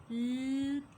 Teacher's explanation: the air stream flows from the sides of the tongue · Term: lateral liquid